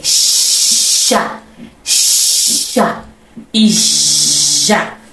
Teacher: o x e o j são consoantes fricativas palatais